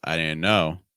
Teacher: Let's use rising intonation on no, because we're actually going to have more information coming after it.